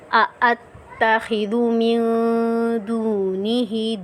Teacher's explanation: دو حمزہ ہیں، دونوں حمزہ کو ہم نے ظاہر کرنا ہے